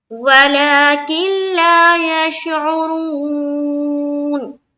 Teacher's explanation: یہاں نون ساکین اس کے بعد حرف لام یعنی کہ ادغام کا قاعدہ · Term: ادغام تام